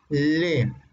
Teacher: la salida del aire se produce por uno o ambos lados de la cavidad bucal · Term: Laterales